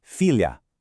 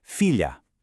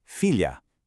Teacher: But, look at the end. We drop that soft ooze sound and replace it with an open, clear ah. Your mouth actually opens wider at the very end of the word.